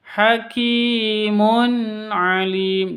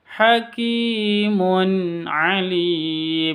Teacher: Tanwin bertemu dengan ain, jelas bacanya karena izhar halqi. Hakimun alim, jangan dibaca dengung, jangan dibaca hakimun alim, itu salah besar ya.